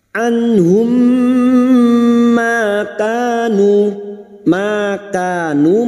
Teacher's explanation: memasukkan bunyi mim sukun kepada mim berikutnya disertai mendengung selama 3 harokat. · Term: idgham mimi